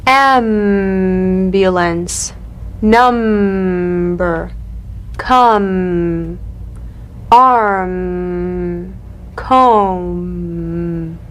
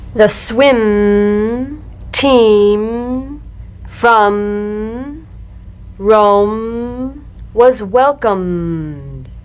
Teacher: The M is a nasal labial consonant made with the lips. To feel the M, simply allow your lips to meet very gently and hum.